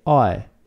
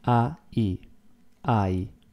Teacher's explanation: In Italian you don't have diphthongs, you just have sudden changes and you pronounce everything. So the word I is like two words, A-I, I.